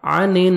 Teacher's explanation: عن نون مشدد غنہ کریں گے۔